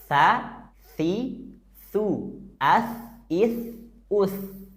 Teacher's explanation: saat nyebut huruf tsa tempelkan ujung lidah kita ke Ujung gigi seri atas